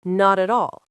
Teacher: When you say it naturally, it almost sounds like one word, not at all. The T from not connects to the A from at. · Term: Linking